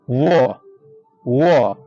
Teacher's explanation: व व जो होता है दांत और ओठ दोनों की सहायता से बोलते हैं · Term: धं तोष